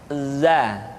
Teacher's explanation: Selanjutnya huruf za, diucapkan dengan cara ujung lidah kita berada di antara dua gigi seri bagian atas dan bagian bawah